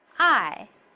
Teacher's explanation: The fourth goes from the top to the lowest.